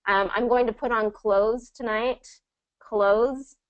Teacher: It's always going to pronounce without the TH sound.